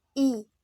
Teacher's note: let's try to make this sound e when you pronounce it your tongue is a little higher in your mouth and it's a short sound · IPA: /I/